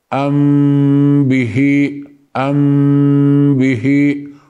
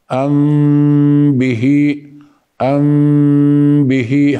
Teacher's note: الشفتين لا ندع فرج ما بين الشفتين في الاخف فاء الشفوي انما نظهرها ميم في بدء الامر ثم ننهي بالباء لذلك سميت بالاخفاء الشفوي